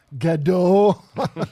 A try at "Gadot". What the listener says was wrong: I think you actually pronounce the T. It's not French. silent T's in Hebrew.